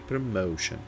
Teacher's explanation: Nesse caso, o mais forte é o som do meio